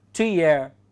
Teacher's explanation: both words are not stressed, that is pyrrhic